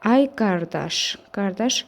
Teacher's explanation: müraciət eledəndə isə bir vurğu əvvələ gəlir. Burda isə artıq birinci hecaya düşmüş olacaq.